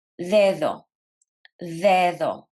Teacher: In Spanish, the letter D is dental, which means the tongue touches the teeth. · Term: Spanish D